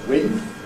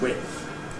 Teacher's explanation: Most people I think say it as /wɪdθ/, with starting voiced but then going voiceless, /wɪdθ/, although some people assimilate it and make the whole thing voiceless